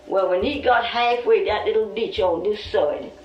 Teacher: Lumbee English speakers share vowel sounds present in the Outer Banks accent, where tide is pronounced toid.